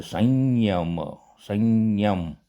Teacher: અનુનાસિક અનુસ્વારને બદલે અનુનાસિક ય બોલાય છે અહિયાં જોઈએ સંયમ તો અનુસ્વાર પછી ય છે એટલે અનુસ્વારને બદલે આપણે અનુનાસિક ય બોલાશે